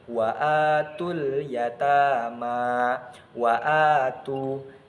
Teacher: Nah, ada hamzah berharokat fathah bertemu dengan alif. Jadi dibaca kira-kira panjangnya itu satu alif atau dua harokat. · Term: mad tabi'i